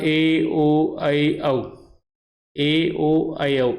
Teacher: इनकी दो मात्राओं का समय इनके उच्चारण में लग जाता है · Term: दीर्घ स्वर